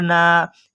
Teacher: الف مدہ کو ایک الف کے برابر کھینچ کر پڑھیں گے، اس کو حرف مدہ کہتے ہیں